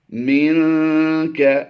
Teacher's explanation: نون ساکن کے بعد حروف اخفا میں سے کاف آ گیا ہے، یہاں پر اخفا کرتے ہوئے غنہ زمانے کی آواز دیں گے